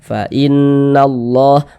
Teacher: Sehingga huruf lamnya dibaca idgham. Nah, jadi dari na langsung masuk ke huruf lam yang ada tanda bacanya ini ya. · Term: idgham syamsiyah